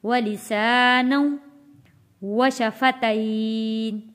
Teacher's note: نون کے اوپر جو 2 زبر ہے واو تشدید کے ساتھ جوڑا جائے گا